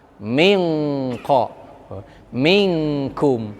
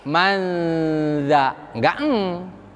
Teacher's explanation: Hasil menempelkan nun sukun atau tanwin ke qaf dan kaf, keluarlah eng.